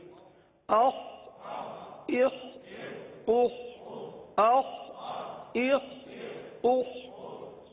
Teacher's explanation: اب یہ بھی حلق سے ادا ہونے والا حرف ہے, اور حلق کے اوپر والے حصے سے ادا ہوتا ہے